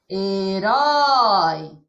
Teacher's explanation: Na palavra herói, a sílaba mais forte é o rói. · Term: sílaba tônica